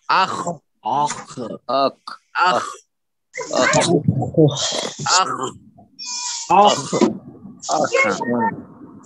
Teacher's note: قاف کی طرح مت پڑھے اس کو، جیسے خالدینہ جیسے پڑھتے خالدینہ، خالدینہ نہیں، بالکل بھی نہیں، تو خا کی طرح بھی مت پڑھیے، بالکل خالدین خالدین۔ تو حلق کے اوپر کے حصے سے ادا کیجئے